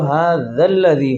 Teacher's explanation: هذا الذي تو بیچ میں الف مدہ حذف ہو جائے گا